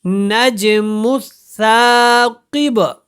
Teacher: کاف کو پر پڑھیں گے اور با کے اوپر قلقلہ ہوگا